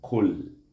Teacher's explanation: Jadi kita mulakan dengan mahras qaf, kemudian kita mati dengan mahras lam, kul. Mana lidah kita naik ke langit-langit, mahras lam semasa mengakhirkan suku kata kul